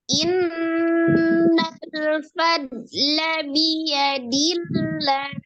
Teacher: Kemudian bertemu dengan alif lam jalalah, termasuk alif lam samsiah, al-samsiah akan ditasdidkan ke huruf lam. Tapi cara membacanya alif lam jalalah, sebelum lamnya itu berharokat kasroh, maka dia dibaca dengan tipis ya. Dibaca dengan tarqiq, dibaca tipis.